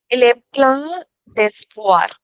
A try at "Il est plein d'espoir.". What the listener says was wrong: Plein d'espoir. And you said it correctly.